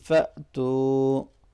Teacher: فأتو میں حمزہ ساکن کو ہم جھٹکا دے کے پڑھیں گے، جرکنگ ساؤنڈ کے ساتھ پڑھیں گے، ٹھیک ہے، اور واو مدہ ہے، اس کو لونگ کریں گے۔